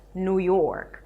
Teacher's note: The stress falls on the second word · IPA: nu: jɔ:rk